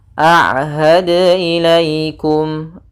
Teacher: jangan sampai terbaca dengan ada tambahan hamzah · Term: qalqalah